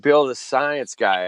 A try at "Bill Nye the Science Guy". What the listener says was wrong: Yo, you can't just say Bill the Science Guy. You have to say the Nye, because it rhymes. Bill Nye, the Science Guy.